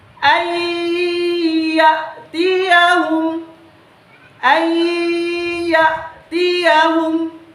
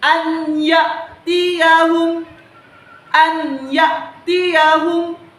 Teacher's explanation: Ketika ada huruf nun sukun bertemu dengan huruf ya, maka nun sukun itu kita leburkan, kita tidak baca, dan huruf alif dimasukkan langsung ke huruf ya. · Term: idgham bi gunnah